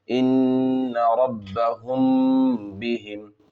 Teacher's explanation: میم ساکن کے بعد با ہے تو اخفاء شفوی ہوگا، غنہ اور اخفاء کے ساتھ پڑھیں گے